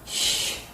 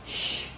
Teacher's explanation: It is produced with partial obstruction, and it is paired with ch. It is a voiceless sound, and it is produced when the tip of the tongue is touching the alveolar ridge, and the middle of the tongue is raised to the hard palate.